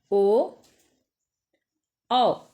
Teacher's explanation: ओ औ का उच्चारण स्थान कंठ और ओठ दोनों मिलकर होता है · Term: कंठ वर्ण